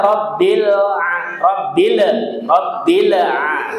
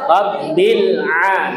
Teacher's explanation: Ditahan bil a. Jangan bil ya. Enggak boleh dipantulkan ya. Bukan huruf qalqalah.